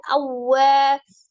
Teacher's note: waw tasdid dinabar ya, cara bacanya ditekan. Awwa dengan tidak ditahan ya.